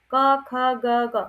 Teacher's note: जो क वर्ग है, इसका उच्चारण स्थान होता है कंठ। क, ख, ग, घ सीधे वायु कंठ से, कंठ को स्पर्श करते हुए बाहर आती है, मीन्स की जो उच्चारण होता है कंठ से होता है, ठीक है? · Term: स्पर्श व्यंजन